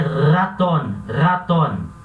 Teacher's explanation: Quando ela vier no início da frase, no início da palavra, perdão, como por exemplo, raton, raton, que é rato, esse R vai ter esse som vibrante, a garganta vai vibrar. Então vai ser raton, raton.